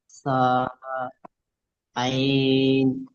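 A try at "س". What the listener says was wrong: না, এটা এটা আইন না, এটা সিন।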